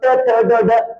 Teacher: आपल्या जिभेचा शेंडा वरती टप टप टप टप हा पडतो त्याला म्हणजे मृदेला मृदा म्हणजे जिभेचा शेंडा तो काय करतो वरती